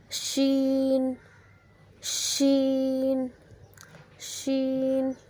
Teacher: جب زبان کا درمیانی حصہ اوپر والے تالو سے لگے تو شین ادا ہوتا ہے۔